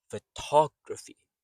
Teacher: So the first syllable is soft unstressed. Fu to is strong and then the third g is soft.